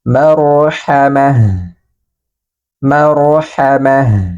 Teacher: Bil maru, huruf ro-nya dibaca tebal. Marhamah, ta marbuto yang berharokat kasro berubah menjadi huruf H sukun